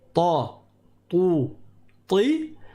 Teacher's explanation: Quand on dit ta, tout, ti, l'arrière de la langue il est élevé.